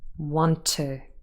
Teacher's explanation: the t in want at the end and then t again in to. And of course, we would not pronounce them separately. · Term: linked